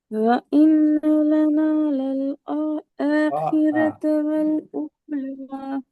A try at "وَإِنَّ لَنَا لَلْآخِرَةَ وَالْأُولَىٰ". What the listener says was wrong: ஆஹிரத்தை கொஞ்சம் நீட்டராக மாட்டுங்க. للآخرة آخرة நீட்டராக மாட்டுங்க.